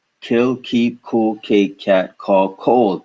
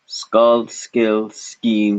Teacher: Lots of air come out of your mouth at the very same time the K and C at the beginning of these words is said. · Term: aspiration